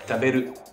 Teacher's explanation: en japonais, il n'y a pas de différence entre le R et le L. Dans les deux cas, on prononce ça un peu comme un R roulé.